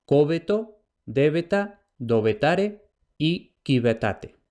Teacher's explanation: la B y la V latinas intervocálicas se neutralizan en una fricativa B